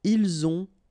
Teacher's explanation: ils ont, okay, final T not pronounced